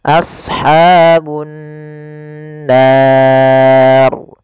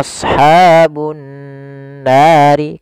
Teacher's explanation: Awalnya adalah ashabun-nari, tetapi karena kita berhenti, huruf 'r' menjadi sukun. Inilah yang kita sebut sukun kering. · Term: Mad Arid Lissukun